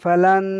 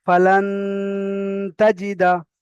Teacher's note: নুন সাকিনের পরে হুরুফে ইকফার 15টি অক্ষরের মধ্যে থেকে তা এসেছে, তাই নুন সাকিনকে একালি পরিমাণ গুণনা করে পড়তে হবে। যেমন ফালান, এই ফালান বলে ধরে রাখছি, এটা হলো গুণনা, ফালান তাজিদা।